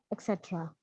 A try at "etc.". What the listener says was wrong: Etc. गलत pronunciation बोलिए. It is ETCETE etc. Not K की आवाज नहीं है, T की है.